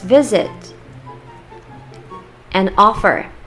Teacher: These words end in one vowel and one consonant, but they are stressed on the first syllable.